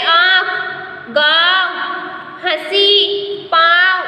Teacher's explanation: अनुनासिक का उच्चारण नाक और मुंह से किया जाता है।